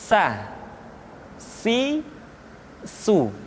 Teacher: Berikutnya huruf sa diucapkan sebagaimana kita mengucapkan huruf sa, yaitu ujung lidah di antara dua gigi seri kita